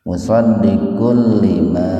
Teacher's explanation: Musaddikul idgham bilaguna. Domatain ketemu dengan lam, dimasukkan ke lam tanpa mendengung.